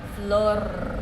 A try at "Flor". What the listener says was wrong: You have to roll the R, Flor. Flor.